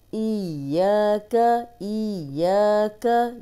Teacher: या को 2 बार पढ़ेंगे और या को 2 हरकत लंबा भी करेंगे क्योंकि अलिफ मद्दा है